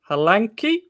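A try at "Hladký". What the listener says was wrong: Where are you putting the N? Hladky. There's no N. Hladky.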